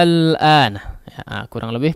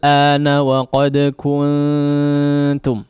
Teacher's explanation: dipanjangkan hamzahnya dipanjangkan sepanjang enam harakat ya baru kemudian masuk kepada lam yang disukunkan